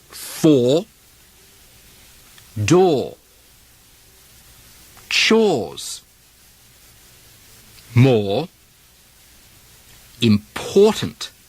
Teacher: The OR combination, or, becomes identical to the pushed OR vowel, like in awful.